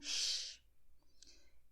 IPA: ʃ